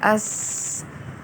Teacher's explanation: اور سین کو سیٹی کی آواز سے اور سختی سے ادا کیا جائے گا